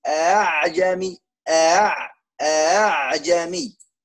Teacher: Yang pertama ada hamzah a, yang kedua tashil. A'jami. A'jami.